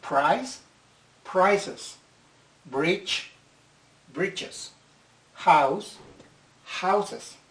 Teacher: when we add the S to form the plural of the noun then we take into account the e and it is pronounced as an extra syllable